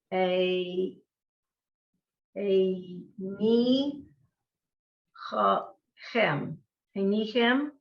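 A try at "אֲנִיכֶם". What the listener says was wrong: All right, one little off. The A is correct. A, nay, chem. vowel underneath the first two are the same, so keep them consistent. A, nay, hem.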